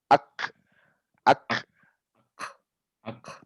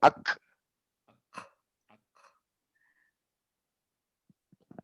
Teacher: Ya, coba disukunkan. Ak. Ada percikan udaranya. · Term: hamas